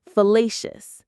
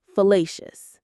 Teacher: The stress here is on the middle syllable.